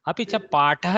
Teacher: अपि च पाठः इत्यत्र महाप्राणः टकारः